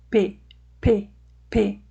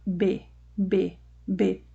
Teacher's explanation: a diferença entre eles é que o P é mais forte, ou seja, a explosão do fluxo de ar é mais forte quando nós falamos o som do P do que quando nós falamos o som do B